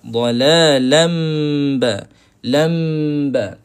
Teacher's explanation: Bila kita rapat, suara tu akan beralih ke hidung. Akan naik ke hidung banyak.